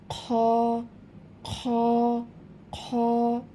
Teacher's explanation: এই খ হরফটি হচ্ছে কণ্ঠনালীর শেষ ভাগ হইতে উচ্চারিত হয়, একটু খড়খড়ে আওয়াজ হবে।